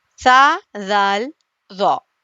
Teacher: زبان کی نوک ثنایا الیہ کا سرا، یہاں سے سا ادا ہوتا ہے